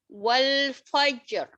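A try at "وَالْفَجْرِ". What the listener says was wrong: Tadi kalau berdasarkan hukumnya ini apa ya? Roknya tipis apa tebal? Tebal. Tadi bacanya tipis tuh. Wal fajr. Tebal, harus tebal.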